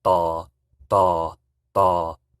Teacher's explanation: So you notice how I'm saying da, da, da. I have a low tone, but then I raise it. So it's very similar to the V tone, but you're raising it from your low tone. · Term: the D tone